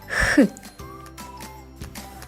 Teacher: язичок створює перешкоду повітрю